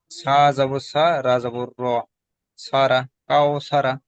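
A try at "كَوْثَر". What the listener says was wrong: সারা নয়, র জাবার র, কাউসার।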